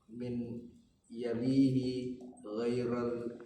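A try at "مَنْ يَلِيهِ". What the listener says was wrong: man yalihi, bukan min ya, man yalihi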